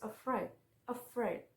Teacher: with stress on the second syllable is afraid